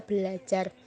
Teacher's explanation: Namun karena ada dua bunyi R, maka R yang pertama diperbedakan atau didisimilasikan menjadi L sehingga menjadi kata belajar.